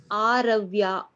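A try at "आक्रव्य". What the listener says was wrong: Conjunct consonants are given. What is the conjunct consonant? It is Ka. The first letter. Yes, you have to say Kakara. Kakara plus Ya.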